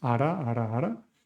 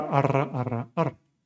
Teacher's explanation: the alveolar tap for the soft R, or the simple R, and the alveolar trill for the rolled R